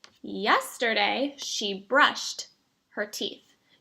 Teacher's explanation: I put the t sound after brushed.